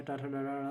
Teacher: के से हो गया कंठ, टी से हो गया तालु, एम से हो गया मूर्धन्य, डी से हो गया दंत, ओ से हो गया ओष्ठ। मूर्धन्य में क्या होता है, जीभ उल्टी होकर ऊपर स्पर्श करती है।